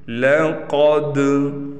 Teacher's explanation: قاف حروف مستعلیہ میں سے ہے، لہٰذا اس کو ہم موٹا کر کے پڑھیں گے۔ دال پر قلقلہ ہوگا، یعنی حواس کو ہلا کر پڑھیں گے۔